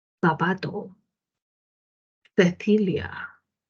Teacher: Cuando articula, por ejemplo, la lengua entre los dientes, existe un sonido que nosotros casi no utilizamos, o bueno, no utilizamos, por lo menos no en América, sino en la península. Y al colocar la lengua entre los dientes y dejar salir el aire, obtenemos ¿qué cosa? La Z. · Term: interdental